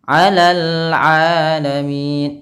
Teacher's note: Al-'alamin ada alif lam qamar ya, yang dimana alif dan lamnya kita tuliskan dan kita baca dengan jelas suara lamnya